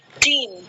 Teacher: if the tongue position is high, it will produce a vowel sound E in the word team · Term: tongue elevation